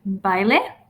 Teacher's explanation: Bailey and by don't necessarily rhyme but they have that same diphthong